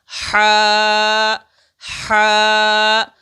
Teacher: ہا یہ حروف حلقیہ میں سے ہے، اس لیے اس کی ادائیگی حلق سے ہوتی ہے، تو ہم اس کو حلق سے ادا کریں گے، ہا ہا۔